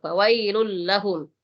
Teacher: Tapi kalau tasdidnya itu di lam, jangan terlalu lama-lama. Jangan mendengung ya. Fawailul lah, tidak boleh terlalu lama.